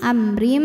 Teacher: hukum idgham bunah karena ada tanwin kasrah menghadapi huruf mim maka tanwin dileburkan ke mim amrim disertai bunyi dengung